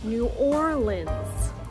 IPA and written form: ˌnu ˈɔr lənz (New Orleans)